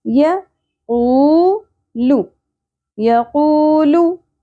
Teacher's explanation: قو، قوف کو پر ادا کریں گے، لحاظ سے نرم تالو سے ادا کریں گے. قوف کو پیش کے ساتھ واو ساکن حرف مدہ ایک الف کے برابر کھینچیں گے